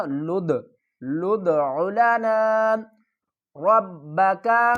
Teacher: لام کو دال سے ملائیں گے، دال کے اوپر قلقلہ کریں گے، قلقلے والے حرف کو ہم ہلا کر پڑھیں گے۔